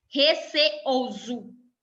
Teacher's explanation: Veja que existe uma separação entre as vogais E e O da palavra receoso. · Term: Hiato